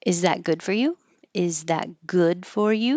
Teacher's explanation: Because it's a yes no question. It'll go up and you won't hear that T because there's a consonant after it.